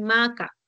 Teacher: en maca tenías la oclusiva velar sorda